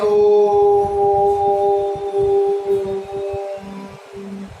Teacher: ओ को हमने ये दीर्घ होते हुए भी हमने इसको और अधिक समय तक जो है उच्चारित किया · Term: प्लुत स्वर